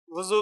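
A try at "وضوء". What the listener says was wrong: जू कहाँ है? जू तो नहीं है इसमें, अरबी में जू तो नहीं है। क्या है? दुआत है ना,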